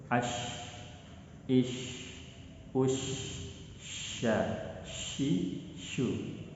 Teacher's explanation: Shin ini memiliki bunyi yang berjalan lepas dan cenderung lembut. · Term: rohwa